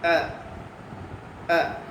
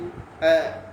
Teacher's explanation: ஹம்ஸா அது எங்கிருந்து வருது தொண்டையிலிருந்து எந்த தொண்டையிலிருந்து கீழ் தொண்டையிலிருந்து வருது